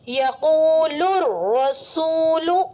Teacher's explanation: الف لام کے بعد حروف شمسی میں سے، شمسی حروف میں جائیے، وہاں دیکھیے را ہے، حروف شمسی میں سے را آ رہا ہے تو الف لام کو نہیں پڑھیں گے بلکہ را کو پہلے والے حرف یعنی لام سے ملا کر پڑھیں گے. اور را مشددہ پر زبر ہے تو را مشددہ پر ہوگی